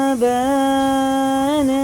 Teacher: یہ مد متصل ہے، 4 الف کے برابر سے کھینچ کے پڑھنا ہوتا ہے کیونکہ اس مد کے بعد ہمزہ آتا ہے